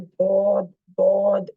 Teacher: अगर ठीक नहीं लग रहा, अगर आप मुंह को मोट तरीके कर रहे हैं गोल बाद कहने के लिए पेश की तरह, या फिर वाव की तरह आप कोशिश कर रहे हैं, दौद दौद, इसको मोटा, यानी कि आगे होंठों को गोल करके आप दौद को मोटा करने की कोशिश कर रहे हैं